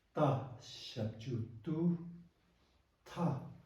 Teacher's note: no expression, high pitched, high tone